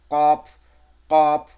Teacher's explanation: এই যে এটা হচ্ছে আপনার তালু, ওপরে, এই যে ওপরে আমাদের তালু, গোড়ার দিকে জিহ্বার গোড়াটা ওই ওপরে ঠেকিয়ে উচ্চারণ হবে